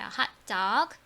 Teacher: 둘 다 강세를 받는 단어는 뒤에를 더 세게 읽어라 말씀드렸어요.